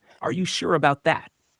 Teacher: voice goes down slightly at the end